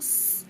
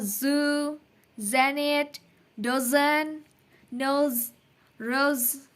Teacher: Misal kita ngomong s, kan tidak ada getaran ya di sekitar leher sini atau pita suara. Kalau kita bunyikan yang z, itu tinggal seperti kita membunyikan s, tapi ditambah dengan getaran atau vibration di pita suara gitu. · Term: voiced